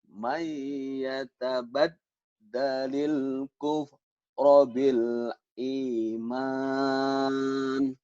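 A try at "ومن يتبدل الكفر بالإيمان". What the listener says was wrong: Tuh bagus ya.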